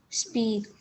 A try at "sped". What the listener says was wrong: You said speed. Is that what you see? It's closed in.